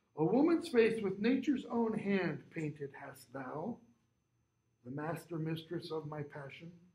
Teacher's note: notice i didn't pause at the end of the first line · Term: enjambed line